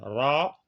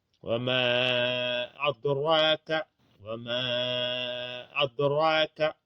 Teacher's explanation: le ra, quand il porte un fatha, il doit être alourdi